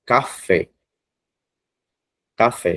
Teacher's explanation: A palavra oxítona, ela tem a sílaba forte a última sílaba